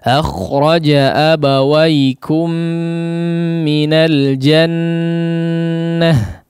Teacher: Abawaikum, kum, ya, mim sukun di sini diidghamkan kepada mim yang kedua sehingga mim yang kedua ini bertasydid